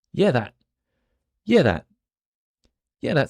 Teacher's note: so that the noise with my tongue I don't use it the t h sounds more like a d